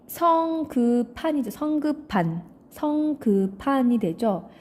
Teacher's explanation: 네, 같은 조음 위치와 조음 방법인 피읍이 생기죠. 그러니까 비읍과 히읗이 축약되어서 피읍이 만들어지죠